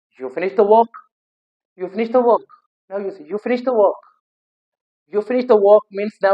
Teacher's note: the pitch of your voice goes up at the end of a sentence. आपके voice की जो pitch होगी वो हाई हो जाएगी सेंटेंस की एंड में, and it is used to seek confirmation. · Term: rising intonation